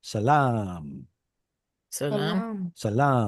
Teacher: The Arabic language did not suffer from the Canaanite shift. So it still preserves a long ah.